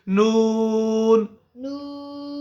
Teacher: ابھی نون کے وقت میں ناک میں آواز نہیں جانی ہے